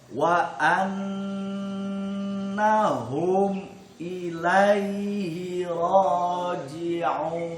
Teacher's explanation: Ro-nya panjang 2 harokat karena ada patah berdiri